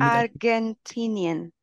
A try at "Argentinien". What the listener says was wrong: Perfekt.